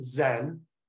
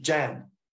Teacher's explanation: Judeo-Median languages have what in Persian is a Z sound expressed as a J sound